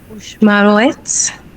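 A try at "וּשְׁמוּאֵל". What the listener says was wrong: The only little refinement, the very first word, the very first letter U means and. And in this case, we don't combine it with the next letter to form a closed syllable.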